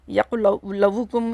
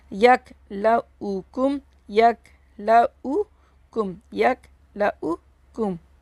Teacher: ये ऊ की आवाज़ आएगी, वो की आवाज़ नहीं आएगी। ये बाज़ लोग ना यक लवू कुम इस तरह कर देते हैं, तो ये इस तरह नहीं है।